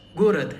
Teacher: we have two o's and only the first o is stressed. Hence it is read as gorat.